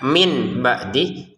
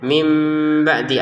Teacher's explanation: Karena di depannya ada huruf ba. Sehingga kita bacanya bukan min ba'dih tapi mim ba'di disertai samar